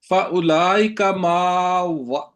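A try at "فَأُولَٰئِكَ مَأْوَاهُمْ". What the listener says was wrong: माँ को लंबा ना करें। उलाई का मावाहुम।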